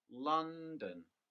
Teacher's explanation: using the example london the stress is on the first syllable